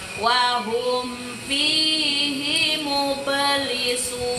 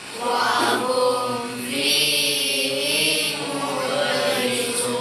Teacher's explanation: ba sukun di tengah kalimat, maka bacanya harus mantul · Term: Qalqalah dari huruf ba